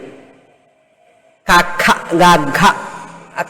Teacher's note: కఖ గఘ కంఠంలో నుంచి వస్తుంది శబ్దం కనుక కంఠ్యములు అన్నారు